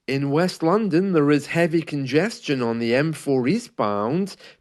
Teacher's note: in this report you can hear that there's no intonation really coming down